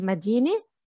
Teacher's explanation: Just be mindful, مدينة is a city, but when you're annexing a noun like مدينة بيروت, the sound is gonna change to it. So مدينة, you're not pronouncing the round تا at the end, it becomes an e sound